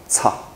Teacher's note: 这个读作送气的叉，一样没有卷舌哈，叉